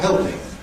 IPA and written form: ˈheɫpɪŋ (helping)